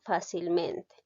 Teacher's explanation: la palabra o el adverbio fácilmente tiene dos sílabas tónicas, en la sílaba fa y en la sílaba men. Por eso se dice que es ditónica.